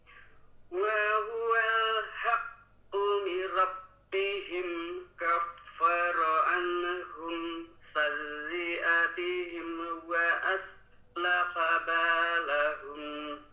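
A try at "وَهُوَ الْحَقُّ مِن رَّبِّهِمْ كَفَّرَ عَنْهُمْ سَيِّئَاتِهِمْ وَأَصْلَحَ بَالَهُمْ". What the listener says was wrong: Ada beberapa yang tidak mantul, ada yang masih mantul. Mim sukun, nun sukunnya ya di sini.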